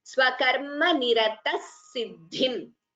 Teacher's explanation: Visarga followed by sa we combine the sandhi and chant it as Swakarma Nirata Siddhim.